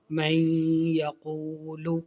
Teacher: نون ساکن کے بعد یا حرف یرملون ہے۔ اب اس میں ادغام ہو رہا ہے غنہ کے ساتھ